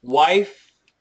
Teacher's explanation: the wife no teeth touching but vibration yes